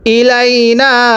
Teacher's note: এই নুনের মধ্যে আমরা 3 আলিফ টান দিব।